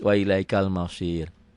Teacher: Wa ilaikal mausirula diteruskan, disambung. Tapi kalau dihentikan mausir jadi sukun jadi tarkik. Jadi tipis.